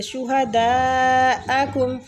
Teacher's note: شُہَدَاءَکُم، دال کے اوپر جو مد ہے اس مد کو مد واجب متصل بولتے ہیں، ٹھیک ہے۔ اس کو 4 سے 5 الف کھینچ کے پڑھیں گے۔